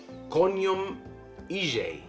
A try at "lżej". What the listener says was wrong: This is an L. Lżej.